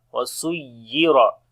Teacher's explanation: On the ya we make nabr, like the raising our voice on the ya. وَسُيِّرَ. Ra we read in heavy sound due to fatha sign on it.